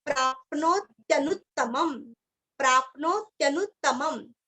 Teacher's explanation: दो त का उच्चारण अच्छे से करना है, लास्ट में आधा म